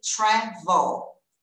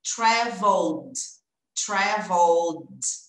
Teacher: Olha o L lá no céu da boca. Segura essa pontinha lá em cima, tá? Senão ela fica frouxa e fica...